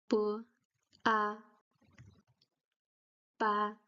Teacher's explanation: The difference is that the B sound in Chinese is more closer to a P sound. You don't uh blow air out of your mouth